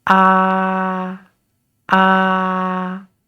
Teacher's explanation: when we pronounce the first tone remember it is flat and it start high